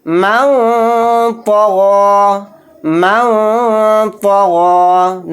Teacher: نون کی آواز کو ناک میں چھپائیں گے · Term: اخفا